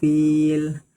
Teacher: Karena huruf fa berharakat kasrah diikuti ya sukun. Cara bacanya dipanjangkan dua harakat. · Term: mad thobbi'i